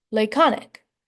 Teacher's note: Laconic is pronounced with an emphasis on the second syllable of the word.